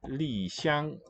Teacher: The falling fourth, and then xiang is high level first tone.